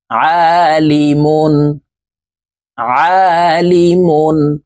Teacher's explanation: এই আইনকে হলকের মধ্যখান থেকে চাপ দিয়ে উচ্চারণ করতে হবে কারণ আইনের মখরাজ হলকের মধ্যখান থেকে হবে আইন আলিফ জবর আ